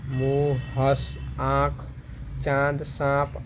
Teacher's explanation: इसका चिन्ह चंद्रबिंदु द्वारा दर्शाया जाता है। इसका उच्चारण नाक एवं मुंह से होता है। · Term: अनुनासिक